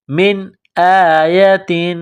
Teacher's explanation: حروف حلقی ہے تو نون ساکن پر غنہ نہیں کریں گے، آواز ناک میں نہیں چھپائیں گے